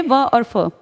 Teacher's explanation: दांत और होठ से बोले जाते हैं दंतोष्ठ से व और फ